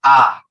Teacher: যখন তুমি উচ্চারণ করছো ঠোটটা একবারে খুলে গেছে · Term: বিবৃত